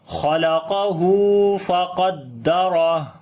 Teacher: الٹا پیش ہے، دال کے اوپر آواز تھوڑا سٹرونگ کریں گے، را کو موٹا پڑھیں گے، ہا کے اوپر صفت ہمس کریں گے جب رکیں گے